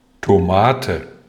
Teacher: Tomate▁有3个开音节，但重音在第2个音节